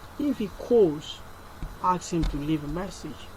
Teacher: The tone rises in the first clause and falls gradually in the second clause. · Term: Rise and fall